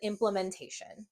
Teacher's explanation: when you say it quickly, this A sometimes has its lazy sound called a schwa